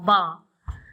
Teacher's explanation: ब का उच्चारण दोनों होठों के मेल से होता है। ब दोनों होठों के मिलने से ब उच्चारित हो रहा है।